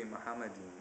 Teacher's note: the M sound is is not elongated and there's no o in the first syllable